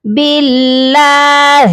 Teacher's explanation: اس ہا کی آواز حلق کے سب سے نیچے والے حصے سے یعنی کہ سینے کی جانب سے آتی ہے